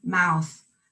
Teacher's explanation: Lips wide and back for the O, then rounded, narrowed for the U, the diphthong.